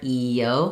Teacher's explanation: And between the E and the O, you'll notice we do a little vowel-to-vowel linking there, E-O. So naturally a little y sound will happen as we connect stereotype